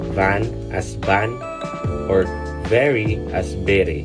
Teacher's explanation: Filipinos might pronounce van as ban or very as b. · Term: V and B sounds